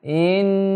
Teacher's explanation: Jadi i-nya tidak langsung ketemu nun, tapi ada mad di situ yang ditambahkan.